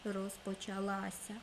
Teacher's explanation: в слові розпочалася нема подовженого звуку звук с не подовжений тому ми не будемо вставляти ще одну букву с на весь